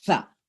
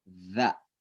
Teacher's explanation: Kalau sa itu kayak digigit dan didorong dengan keras. Sa ya. Kalau za lembut.